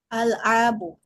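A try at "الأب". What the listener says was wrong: Al-abu. Ah, itu masih terdengar seperti ain ya.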